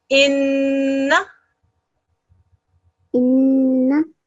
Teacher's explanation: the noon mushaddad is stressed like all other mushaddad letters, but it's stressed in a slightly different way, and it's known as a noon ghunna sound